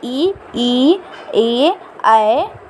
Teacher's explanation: अग्र स्वर जिसमें जीभ के आगे का भाग कार्य करे वह हो गया अग्र स्वर